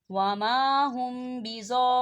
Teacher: خالی الف سے پہلے زبر ہے اور اس کے اوپر مد ہے، اور مد کے بعد جو ہے تشدید آ رہی ہے، تو اسے مد لازم کہا جاتا ہے